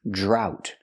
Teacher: We see the DR making the J sound like juice and jump, plus the R